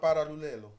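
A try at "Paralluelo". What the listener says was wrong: It's double L, innit? I think the double L is pronounced Y. That's how they say paella.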